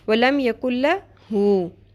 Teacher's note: مد اصلی ہے, نقصان حرف نہیں کرنا, شارٹ نہیں کرنا ہے, اس کو ہو ہی پڑھنا ہے, اور اس کو اتنا لمبا بھی نہیں کر دینا کہ مد بن جائے.